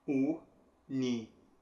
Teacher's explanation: em português, a sílaba tônica, que é aquela que recebe mais força, é ver.